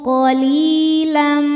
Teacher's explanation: Sebab ya sukun sebelumnya baris kasrah dibacanya panjang dua harakat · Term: mad thobi'i zohiri